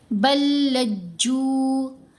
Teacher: لام کی آواز مشدد لام کے اندر مرج ہو جائے گی، مکس ہو جائے گی. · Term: ادغام مثلین